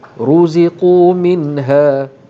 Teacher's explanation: Kullama ruziqu. Okey, ru ditebalkan kerana ra berbaris hadapan. · Nun mati bertemu dengan ha, hukumnya izhar halqi, tidak didengungkan.